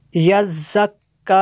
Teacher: یہ زا ہے اس کو سخت پڑھنا ہے اور باریک بھی کرنا ہے